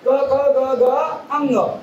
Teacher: आपण जर आपलं जर का मुखाचे आतमध्ये जर बघितलं तर पड आहे आणि त्यापेक्षा जो भाग आहे आणि आपली मुख्य जीभ आहे, ते मुख्य जिभेचा मागील भाग कुठे वरती उचलले जातात आणि वरती उचलून पडजिभेला टेकतो आणि पडजिभेला टेकल्यानंतर हे वर्ण उच्चारले जातात। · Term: कंठवर्ण